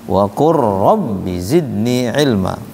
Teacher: Lam ketemu ra harusnya idgham mutaqaribain.